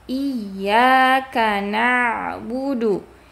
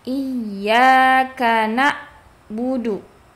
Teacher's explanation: Nah, sedangkan huruf ain harus mengalir sebagian dan makhrajnya harus di tengah tenggorokan.